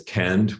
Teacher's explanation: the root kand has come out in Agulis as kand with a front vowel, and that frontness then spreads on to the o, which normally becomes ur in this dialect, and makes it front.